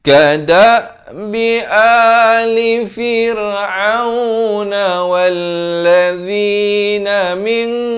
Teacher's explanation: dibacakan dengan ikhfa 2 harakat, tetapi dibacakan dengan tebal kerana qaf merupakan huruf isti'la